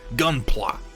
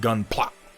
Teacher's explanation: With like a glottal stop at the end of it.